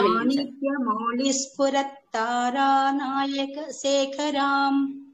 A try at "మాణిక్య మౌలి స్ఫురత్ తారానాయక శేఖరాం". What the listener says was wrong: అలాగే మౌళి అన్నారు, అలా లేదండి. సంస్కృతం ఉచ్చారణలో అలా వినిపించకూడదు, లానే వినిపించాలి. అలా ఉన్నా లా ఉన్నా 2 చోట్ల అల్లానే. అదొకటి గమనించండి. మౌలి